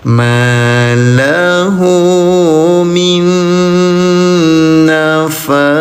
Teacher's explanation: Langsung ke nun bertasdid. Tempelkan minna tahan dengungkan dua harakat.